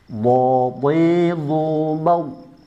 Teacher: Ingat bad suaranya tidak begitu ditekan. Kalau terlalu ditekan akan keluar qalqalahnya bukan bad. Jangan dikasih qalqalah, jangan dipantulkan. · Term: rakhawah